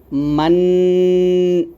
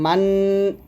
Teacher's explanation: জিহ্বাটা উপরের তালুর সঙ্গে লাগিয়ে এইযে মান যে শব্দটা আমি বের করছি সেটা কিন্তু আমি নাকের থেকে বের করছি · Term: গুন্নাহ